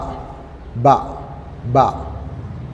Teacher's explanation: രണ്ട് ചുണ്ടുകളും ശക്തിയായി അടക്കുക.